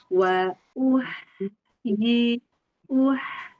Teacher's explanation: H sukun dia itu mengalir dan tipis. Jadi dia dialirkan dan ketika sedang mengalir bibirnya agak senyum, posisinya tipis.